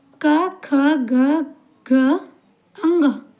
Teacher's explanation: जब भी हम क वर्ग का उच्चारण करते हैं तो जो हमारे साउंड है वो हमारे गले से, हमारे कंठ से होके बाहर आता है। और वायु का ठहराव जो है वो कहीं और नहीं होता है, वायु का जो जोर है वो हमारे कंठ पर ही पड़ता है।